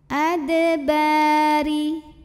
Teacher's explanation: Huruf ra dibunyikan secara tarqiq sebab barisnya di bawah, maka bacanya tipis.